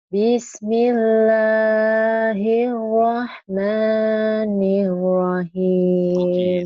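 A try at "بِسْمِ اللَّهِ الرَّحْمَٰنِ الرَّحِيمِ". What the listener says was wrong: gitu kayak orang barat. Nir. Bismillahirrahmanirrahim. Bismillahir. R-nya ya jangan new. Bismillahirrahmanirrahim. Jangan. Bismillahirrahmanirrahim. R-nya harus jelas ya. Coba bismillah. Lagi bismillah. Terus lagunya lagunya jangan lagu yang ngantung. Bismillah. Bismillahirrahmanirrahim. Ayo jelas.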